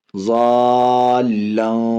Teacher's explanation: حرف مدہ کے بعد تشدید مد لازم کھینچ کر کے